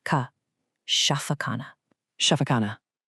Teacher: Now, that kha sound is probably the trickiest part for English speakers. It's a soft sound from the back of your throat, kind of like you're gently clearing it.